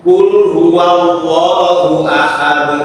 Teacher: membaca lam yang berharakat fathah pada lahul jalalah Allah itu seharusnya dibaca panjang dua harakat